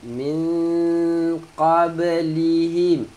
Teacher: Min nun mati bertemu qaf, dengung sembunyikan bunyi nun.